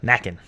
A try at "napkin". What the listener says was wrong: Napkin. There's no P. The same thing with pumpkin. Pumpkin and napkin had no P's.